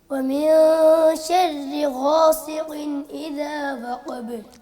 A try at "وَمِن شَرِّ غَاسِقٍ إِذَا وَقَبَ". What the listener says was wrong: غاسق, سین ہے, سین کی آواز باریک ہے. غاصی, سی, یہ صاد کی طرح نہیں پڑھنا اس کو. غاسق, غاسق, اس آیت کو دوبارہ پڑھیں. وَمِن شَرِّ غَاسِقٍ إِذَا وَقَبَ.